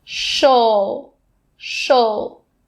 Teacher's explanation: my tongue is touching the top of my mouth for that o sound while my lips are still sticking out for that sh sound